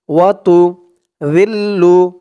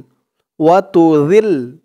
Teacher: জালের উচ্চারণটা কিন্তু একদম নরম পাতলা করতে হবে, জিহ্বার মাথা উপরের দাঁতের মাথার সাথে লাগবে জালের উচ্চারণটা করার সময়।